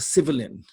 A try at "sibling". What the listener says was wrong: Sibling, just two syllables. Sibling.